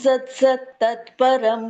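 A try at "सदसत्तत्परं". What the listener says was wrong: ಸದಾ ಸತ್ ಸದ ಸತ್ ಸತ್ ಅಲ್ಲ, ಅಲ್ಲಿ ವ್ಯಂಜನ ಇಲ್ಲ ಮಾತಾಜಿ. ಸದಾ ಸತ್ ತತ್ಪರಂ.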